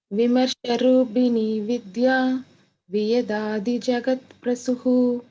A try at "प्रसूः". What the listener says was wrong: Prasuhu. It is a Dirghaman. Prasuhu.